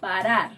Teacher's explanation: The first sound resembles the r in butter. It's called a flap